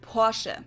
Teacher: in German we say Porsche so there is like this short a sound in the end